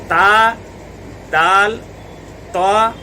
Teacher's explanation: तो इसकी जो जड़ है वो ज़ुबान की नोक उसके जड़ में लगेगी तो ता, दाल, ता अदा होंगे। ये तीनों हरूफ अदा होंगे ज़ुबान की नोक और सनाया उलिया की जड़। ता, दाल, ता, तीनों का मखरज एक ही है।